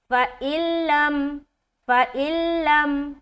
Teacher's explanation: जबकि लाम में गुना नहीं होगा क्योंकि यह इगाम ताम का कायदा है और इदगाम ताम बगैर गुन्ने के होता है सिर्फ मिलाने का काम करेंगे